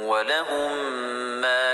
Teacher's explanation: وَلَهُمْ میم ساکن کے بعد دوسرا میم ہے، اسے ادغام شفوی کہتے ہیں. میم کو میم میں ملا کر غنہ کے ساتھ پڑھیں گے